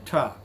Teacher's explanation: It is retroflex, it is also voiceless.